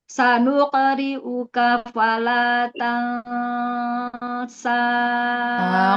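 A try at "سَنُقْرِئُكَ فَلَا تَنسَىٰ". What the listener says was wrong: Qalqalahnya coba qalqalahnya ditebalkan lagi. Sanuqo. Sanuqri'uka. Tipiskan lagi ikhfanya. Tansa.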